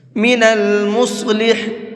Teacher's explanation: صاد کو منہ بھر کے پڑھیں گے